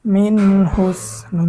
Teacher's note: পেশ হমিন হুস মিন এখানে নন সেকেনের ইজহার নন সেকেনের পরে ইজহারের হরফ হা এসেছে গুন্না ছাড়া স্পষ্ট পড়তে হবে